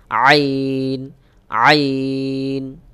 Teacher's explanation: আইন, আধা আইন, যুক্ত আইন। আইন, আইনটা গলার মধ্যখান থেকে একটু চাপ দিয়ে উচ্চারণ করতে হবে